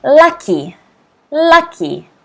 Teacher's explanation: 2 syllables, 1 stress on the first syllable.